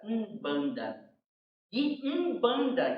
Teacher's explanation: a dar o nome de umbanda é n n mudo né som meia nasalada como se a língua grudasse no céu da boca